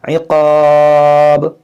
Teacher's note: अलिफ मद्दा के बाद बा पर आर्ज़ी सुकून आ रहा है रुकने की वजह से, तो यहाँ पर मद्दे आरिज़ का कायदा लगेगा। इक़ाब, इस तरह खींच कर रुकेंगे।